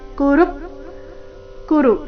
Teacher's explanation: ಕುರು ಎರಡು ರಸ್ವ ಋ ಮೇಲೆ ಆಘಾತ